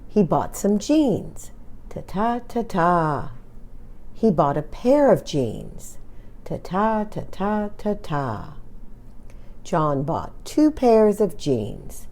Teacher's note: some words are strong and others are weak the last word is the strongest and longest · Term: sentence stress